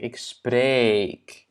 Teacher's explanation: dans le radical du verbe, en fait, il y a un long E